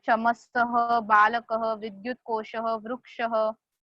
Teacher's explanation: ये सब words, all these words are ending in aha, visarga, hence they are termed as pullinga words, masculine words.